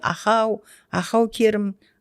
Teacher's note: Ал біздің қазақ тілінде ахау, ахау керім, тілдің артымен айтылады